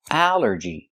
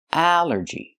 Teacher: The stress is only first syllable.